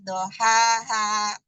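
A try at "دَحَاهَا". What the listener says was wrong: Dahaha, dal bukan do, da.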